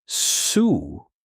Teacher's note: the Japanese U sound is softer than in English. It's almost whispered. So instead of saying su, you say something closer to su, very light, almost like the sound is disappearing.